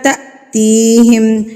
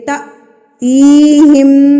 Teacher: جب الف کے اوپر یہ سکون کی علامت آ جائے، جزم آ جائے، تو اس کو جھٹکا دے کے پڑھا جاتا ہے